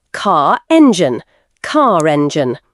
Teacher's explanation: Example, car sounds like car, but if the next word starts with a vowel, you may hear a linking R